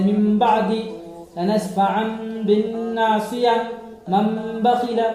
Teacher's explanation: اس کے بعد ہم نے آپ کو قاعدہ نمبر 3 بتایا اطلاق کا قاعدہ، جہاں پر تنوین نون ساکن کے بعد اگر با آئے تو وہاں پر تنوین نون ساکن کی آواز کو با سے بدل کر نہیں، میم سے بدل کر پڑھنا ہے